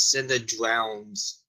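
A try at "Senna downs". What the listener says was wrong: Down. says downs. There's no R.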